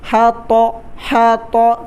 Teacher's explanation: ہا کو گلے سے نکالنا ہے، طا کو موٹا پڑھنا ہے